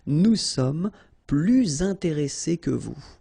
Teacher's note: you make this little link, little liaison between the two, so you hear a little bit this S